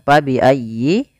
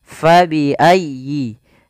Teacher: Di sini fa harus dialirkan, jangan sampai diganti dengan p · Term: huruf f